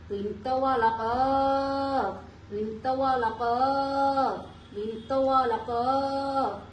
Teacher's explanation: জিহ্বার গোড়া তার বরাবর পরে তালুর সঙ্গে লাগাইয়া